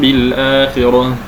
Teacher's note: فتخف الميم عند الباء مع بقاء الغنه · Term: الاخفاء الشفوي